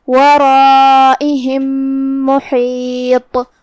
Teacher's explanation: آخر میں یہاں میم ہے اور اس پہ جزم ہے، پھر حرف المیم آتا ہے کلمت محیط میں، یہاں حکم ہے ادغام متماثلین صغیر۔ ہم پہلے میم کو دوسرے میم میں داخل کر کے ایک ہی میم پڑھیں گے غنہ اور تشدید کے ساتھ